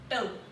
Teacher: आपकी टंग आपके माउथ के अंदर अपर साइड को टच कर गया. I mean somewhere behind your upper teeth